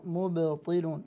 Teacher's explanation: نعم الباء الساكنة فيها قلقلة